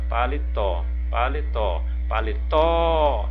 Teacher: então a última sílaba é a sílaba tônica